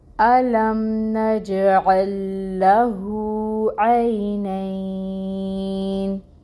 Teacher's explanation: اس نون کو ہم ساکن کریں گے کیونکہ وقف کر رہے ہیں، آیا مکمل ہو رہی ہے تو نون کو ہم ساکن کر دیں گے، نون کی حرکت کو ختم کر کے۔